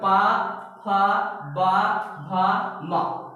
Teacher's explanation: ये सभी जो वर्ण है वो ओष्ठ के माध्यम से, ओठों के माध्यम से बोले जाते हैं। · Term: पा वर्ग